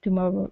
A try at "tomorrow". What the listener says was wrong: Give me good R's here instead of tomorrow. Okay, tomorrow.